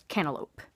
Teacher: Another with the differences in the T's is demonstrated in Cantalope, where there is no T at all. There's no glottal stop, and it's not pronounced as a D. It's like the T is not there.